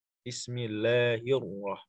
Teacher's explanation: Kalau ro itu tasdid, maka kalau huruf sebelumnya kasroh, bismillahir. Masuknya tarkik, keluarnya tafkhim. Hirroh. Bismillahir, tarkik ya, tipis. Terus keluar tebal. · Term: langsung tafkhim